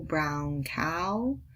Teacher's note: we start with an open back and we bring it forward to round at the end